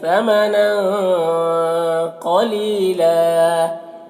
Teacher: ثمنن، یہاں پر نون کی تنوین میں اخفا ہو رہا، تنوین کی آواز کو ناک میں چھپا کر پڑھیں گے